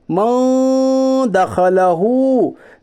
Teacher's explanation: नून साकिन के बाद हरूफ इख्फा के 15 हरफों में से दाल है, इसलिए इख्फाए हकीकी होगा। यानी नून साकिन की आवाज़ को नाक में छुपाकर गुन्नाह के साथ पढ़िए